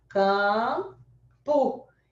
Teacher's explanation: na palavra campo, tem que estar nasalizado